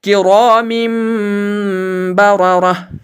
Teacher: یہاں اس تنوین یعنی میم دو زیر پر اقلاب ہوگا، کیونکہ اس تنوین کے بعد با متحرک یعنی زبر والا با آتا ہے، جس کی وجہ سے یہاں تنوین میں نون کی آواز کو میم کی آواز سے بدل کر گنہ اور اخفا کے ساتھ پڑھیں گے